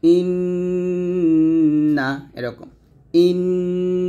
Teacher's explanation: নুনের গুন্নাটা জিহ্বার আগাটা উপরের তালুর সঙ্গে লাগবে জিহ্বার আগাম তার বরাবর উপরের তালুর সঙ্গে লাগিয়ে নুনের গুণনা করতে